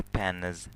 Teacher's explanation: n bu yerda jarangli, shuning uchun ham s emas z tarzida o'qiladi.